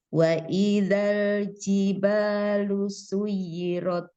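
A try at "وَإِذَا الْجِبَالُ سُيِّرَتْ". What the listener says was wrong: Suyirat. Kan ini tadi naber. ditinggi. Pokoknya tafkhim. Suyirat. Suyirat. Iya, buka lagi ronya. Kurang luas seperti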